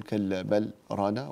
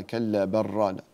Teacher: هنا في كلا بل رانا هنا يوجد سكتة لطيفة عند حفص، وحفص وحده وليس أحد من القراء العشر، فهنا ننتبه ألا نسكت، فلا نقول كلا بل رانا وإنما كلا بل رانا، فتدغم اللام في الراء إدغاما متقاربين، هذا إدغام متقاربين.